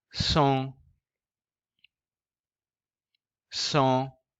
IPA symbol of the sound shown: õ